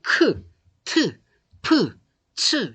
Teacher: 거센 소리는 일단 숨을 많이 내보내요. 많이 내보내고 성대는 긴장을 하긴 해요.